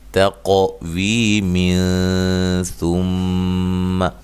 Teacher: یہ نون تنوین کا اخفا ہوگا، اخفا مع الغنہ، باریک اخفا ہوگا۔ تقویم ثم، ٹھیک ہے جی۔